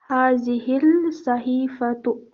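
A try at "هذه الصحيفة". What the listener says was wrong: تو سوال جو ہے یہ حروف شمسی میں سے ہے تو لام کی آواز نہیں آئے گی. ہاذہ الصحیفۃ.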